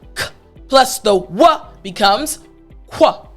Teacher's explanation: So now the /k/ plus the /w/ becomes /kw/.